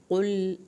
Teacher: قل لام کو نہیں ہلانا، قاف کو پر کر کے پڑھنا ہے۔